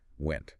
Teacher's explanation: ends in a sharp, abrupt t that just violently cuts off the air